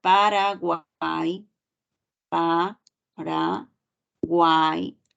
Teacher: yo escucho que la que tiene la mayor fuerza de voz es la vocal abierta esa suena un poquito más y está acompañada de dos vocales cerradas no está acompañada de la u está acompañada de la i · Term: triptongo